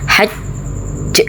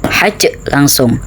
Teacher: karena ini ada tasydid berarti qalqalah akbar, ada jeda sebentar kemudian baru diqalqalahkan